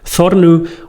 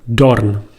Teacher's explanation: the loss of the th sound, th, into d. So we have, instead of the West Germanic thornu, we had the High German dorn.